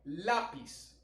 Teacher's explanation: Lápiz es una palabra grave porque la sílaba tónica recae en la penúltima sílaba.